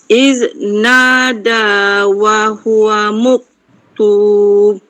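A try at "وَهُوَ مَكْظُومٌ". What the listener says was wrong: Mak, bukan muk. Wa huwa makzum.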